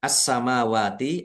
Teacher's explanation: alif lam syamsiyah karena tidak dibaca langsung masuk ke huruf berikutnya yaitu sin